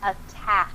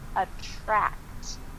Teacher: Also the end, the T on attract and the K on attack and C. The C noise is in your throat and the T- noise is between your teeth.